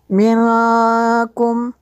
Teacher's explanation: یہاں پہ نون ساکن کے بعد کاف حروف اخفاء میں سے ہے تو اس لیے غنہ ہوگا۔